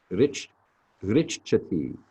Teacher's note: you actually hit the CH sound twice and put a little extra air for the H after the second instance